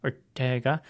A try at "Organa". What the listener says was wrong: Organa? It's not Ortega. There's no T in it.